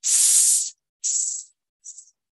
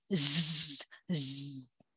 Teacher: Did you notice the buzzing that you with with z? Okay, now when you pronounce z, okay, you hear the effect of voicing at the vocal cords